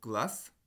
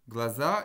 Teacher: la voyelle A a un petit peu changé. Elle s'est centralisée, c'est-à-dire qu'elle s'est rapprochée du schwa. C'est pas tout à fait un schwa, vous ne connaissez pas, il ne me semble pas qu'on l'ait vu, cette voyelle-là.